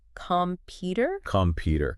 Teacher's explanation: in computer, the stress is on the second syllable